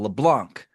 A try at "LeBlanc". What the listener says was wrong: the C is silent in LeBlanc. LeBlanc. But it is silent.